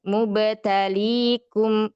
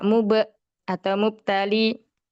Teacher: qalqalahnya dipantulkan dengan jelas. Mubtalikum tidak mub atau mubtali.